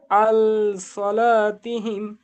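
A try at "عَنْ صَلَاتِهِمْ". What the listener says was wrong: এই আনটা গুণনা হবে। আন সালাতিহিম,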